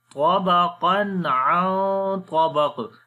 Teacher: And after the tanween, the next letter is ayn. We make izhar here, the clear sound of noon.